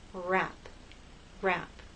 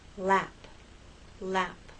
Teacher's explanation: It's like in a small, tight ball. The tongue is more tense for rap, for R, than it is for lap, L.